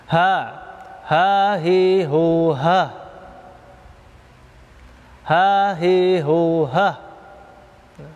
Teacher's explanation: Yang pertama, hamas, nafas berhembus. Ha, ketika pengucapan huruf ha, nafas berhembus. Hamas artinya nafas berhembus atau berdesis.